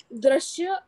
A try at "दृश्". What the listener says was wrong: दृश्य नहीं होता है, दृश्य नहीं पढ़, र नहीं जुड़ा है इसमें, री की मात्रा है, ध्यान रखिए। जब र जुड़ता है तो जैसे प्रा, प्रश्न, अब री की मात्रा है तो पृच्छना, पृच्छना, वैसे ही दृश्य, दृश्य,